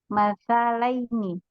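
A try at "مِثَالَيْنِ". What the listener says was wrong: mimnya kasar. Misalaini.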